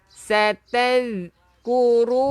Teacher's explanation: Hujung lidah keluarkan sikit untuk zal.